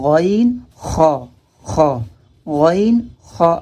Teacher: تو حلق کے آخری حصے سے غین، غین اور خا ادا ہوتے ہیں